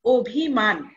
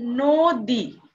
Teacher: অ এর পরে যদি হ্রস্ব ইকার, দীর্ঘ ইকার, হ্রস্ব উকার, দীর্ঘ উকার থাকে তাহলে অ এর উচ্চারণ ও ধ্বনির মতো হবে।